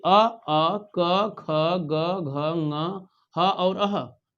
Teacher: ये वर्ण बोले जा रहे हैं किससे, कंठ से।